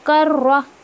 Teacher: रॉ के ऊपर शद्दा है तो काफ को रॉ में मर्ज करेंगे, कर रॉ, ओके।